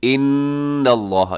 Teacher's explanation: نون مشدد ہے، غنہ کیجیے گا، لفظ اللہ کو موٹا رکھیے گا۔ ان اللہ، اور موٹا اس لیے رکھیے گا کیونکہ لفظ اللہ کی لام سے پہلے نون کے اوپر زبر ہے۔